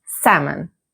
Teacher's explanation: Many learners say salmon, but the standard pronunciation is with a silent L.